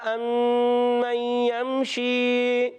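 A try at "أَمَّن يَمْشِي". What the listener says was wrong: امن یمشی غنہ پورا کرنا ہے. امن یمشی. امن یمشی سویاً.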